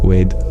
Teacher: the schwa at the end got deleted